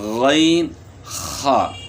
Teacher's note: ادنی حلق، یعنی حلق کا وہ حصہ، یعنی گلے کا وہ حصہ جو منہ کی طرف ہے، یہاں سے 2 حروف ادا ہوتے ہیں